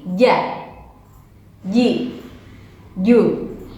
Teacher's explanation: ketika pengucapan huruf ja atau jim maka hilangkan bunyi c.